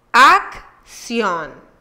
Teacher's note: La primera C se pronuncia K y la segunda S, porque va seguida de I y se pronuncia sí. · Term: Doble C